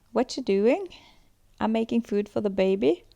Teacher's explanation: really the last feature I'd like to mention is in tonation in kiwi accents declarative utterances often have a rising instead of a falling intonation and this high-rising terminal can also be found in Australian accents